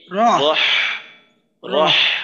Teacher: এই হায়ের উচ্চারণটা কিন্তু আরো গলার মাঝে একটু চাপ দিয়ে বলতে হবে, হলকের মধ্যখান থেকে